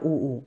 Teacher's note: ऊ दोनों होठों से बोला जाता है, ऊ, ऐसे ध्यान कर लेना। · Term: ओष्ठ